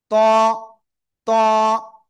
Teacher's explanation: কোন জায়গা থেকে উচ্চারিত হয়? জিহ্বার আগা, সামনের উপরে দুই দাঁতের গোড়ায় লাগান লাগান লাগান, লাগিয়ে একটু মোটা আওয়াজে আমাদের পড়তে হবে এটা।